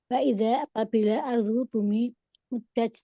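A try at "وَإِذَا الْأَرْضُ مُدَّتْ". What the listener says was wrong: Masukin dulu Bun, jangan cepat-cepat masuk lamnya. Ditempelin dulu, dirasakan wa idzal gitu ya. Wa idzal ardu muddat. Wa idza dan apabila al ardu bumi muddat.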